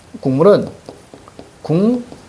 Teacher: 기억이 이음으로 바뀌었습니다. 이음은 무슨 음? 비음. 따라서 비음으로 변화.